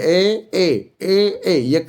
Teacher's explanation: ए ए कंठ और तालु से निकल रहा है।